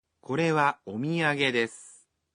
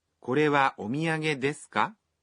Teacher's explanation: You just simply add the particle, ka, at the end of the sentences, and add a rising intonation.